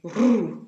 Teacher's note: the French R comes from the throat. For example, the roux, it comes from here, rolling out of your mouth.